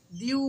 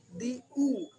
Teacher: হামজার উচ্চারণ একটু ছুচালো ধারালো টাইপের আওয়াজ হয়, তো হামজা পেশ উ।